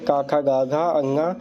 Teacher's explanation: क वर्ग का उच्चारण स्थान कंठ है